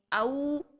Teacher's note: वाउलिन की साउंड को यानी वाव की साउंड को यहाँ पर पूरे गोल होंठों से अदा करेंगे